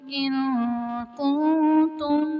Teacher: ان کنتم میں نون ساکن کے بعد حروف اخفاء میں سے کاف آ رہا ہے تو یہاں اخفاء کا قاعدہ ہوگا، یعنی نون ساکن میں ہم غنہ کر کے پڑھیں گے۔ کنتم میں نون ساکن کے بعد حروف اخفاء میں سے تا آ رہا ہے، یہاں بھی اخفاء کا قاعدہ ہوگا، یعنی نون ساکن میں ہم غنہ کر کے پڑھیں گے۔